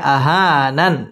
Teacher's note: মদ তবাই এক আলিফ টানে পড়তে হবে